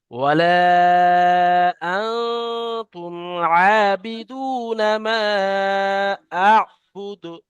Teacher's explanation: দালটা শেষে কলকলা করতে হবে, আর মাটা মাদ্দে মুনফাসিলের জন্য বেশি করে 3 আলিফ পরিমাণ টানতে হবে।